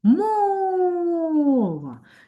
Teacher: чудово наголошений перший склад